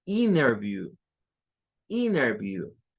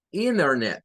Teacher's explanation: donde hay una NT, la T se deshacen de ella y le meten otra N más